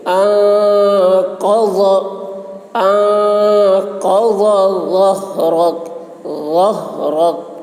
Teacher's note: ضاد کی آواز بھی موٹی ہوگی